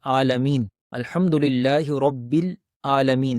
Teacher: تو لیکن جو مخرج کو نہیں جانتے، جو عین کی ادائیگی کو درست نہیں جانتے، تو وہ اس کو پڑھتے ہیں عالمین، الحمدللہ رب العالمین۔ تو عالمین حمزہ کے ساتھ آواز کو ادا کرتے ہیں